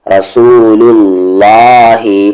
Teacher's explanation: لو کو یہاں لام ملائیں گے، لل، رسول اللہ، اللہ کا لام یہاں پر ہیوی ہوگا